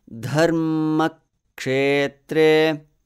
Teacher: All syllables are gurus or heavy.